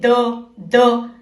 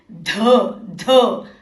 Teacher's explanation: अब द की आवाज के साथ थोड़ी और भारी हवा बाहर निकाले